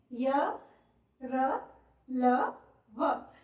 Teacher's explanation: इनको अंतस्थ व्यंजन क्यों कहा जाता है, क्योंकि जब हम इनका उच्चारण करते हैं, य, र, ल, व, जब हम इनका उच्चारण कर रहे हैं तो जो हमारी जीभ है वो हमारे मुंह के किसी भी भाग को ठीक तरीके से स्पर्श नहीं कर रही, पूरी तरह से स्पर्श नहीं कर रही।